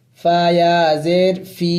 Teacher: یہ زیر فا کے نیچے ہے اور سکون یہ یا کے اوپر ہے، اسے یا مدہ کہتے ہیں. اس کو ایک الف کی مقدار لمبا کرنا ہوگا.